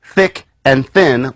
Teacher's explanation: there's thick and thin, where you have the voiceless version coming at the beginning